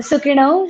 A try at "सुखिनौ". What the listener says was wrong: अरे ऋणा नहीं बना, सुखिनौ, हाँ, तो ये ध्यान रखना है कि हमने क्या सुना है, ठीक है।